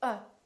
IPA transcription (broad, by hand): ʌ